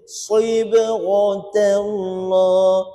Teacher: Safir tu bunyi unggas, bunyi macam bersiul bunyi. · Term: huruf safir